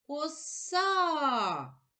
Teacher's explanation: наголошений другий склад наголошений голосний а